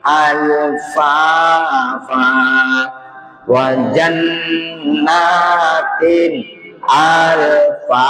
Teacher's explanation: nun bertasdid harus lama · Jadi dia izhar jelas nyata dan tidak boleh lama. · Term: nun bertasydid